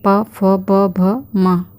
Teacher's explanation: फिर आती हैं ओष्ठियाँ, इसके अंतर्गत हमारे प, फ, ब, भ, म अर्थात पूरा प वर्ग आ जाता है।